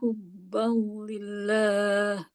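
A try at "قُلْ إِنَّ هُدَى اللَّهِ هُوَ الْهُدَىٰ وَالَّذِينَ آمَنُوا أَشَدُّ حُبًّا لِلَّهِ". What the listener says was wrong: Nah, hubbal tipis. Jangan hubbalil. Jangan gitu. Hubbalillah. Lamnya tipis.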